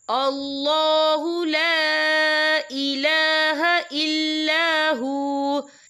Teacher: یہاں دیکھیں آپ کو چھوٹی سی توئیں لکھی نظر آ رہی ہے، تو یہ پھر مطلق کی علامت ہے، تو یہاں پہ ٹھہرنا بہتر ہے. وقف کی صورت میں واو ساکن ہو جائے گا